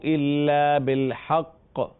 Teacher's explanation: ہا کو موٹا نہیں پڑھنا، ہا حروف مستعلیہ میں سے نہیں ہے، قاف فقط موٹا پڑھا جائے گا